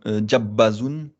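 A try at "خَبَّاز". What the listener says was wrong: Alors, le point est en haut, hein. Quand le point est en haut, c'était le kha, kha.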